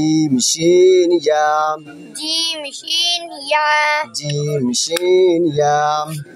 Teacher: জিব্বার মধ্যখান, জিব্বার মধ্যগান তার বরাবর উপরে তালের সঙ্গে লাগাইয়া